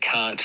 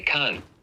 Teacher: English reduces a nasal followed by a stop consonant to a nasal and then a glottal stop